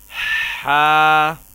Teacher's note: حلق کے درمیانی حصے سے ادا کریں گے